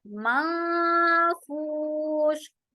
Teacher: नून की आवाज को कंप्लीटली हम यहाँ हाइड कर देंगे। माफूश, और श करते हुए आवाज में खलखला नहीं होगा, राइट। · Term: इख्फा